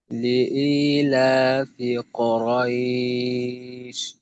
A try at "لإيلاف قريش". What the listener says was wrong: আচ্ছা কথা কফের উচ্চারণটা একটু ক কু উ এর স্বরটাকে আর একটু স্পষ্ট করা। কুরাইশ, কু, এই অবস্থা।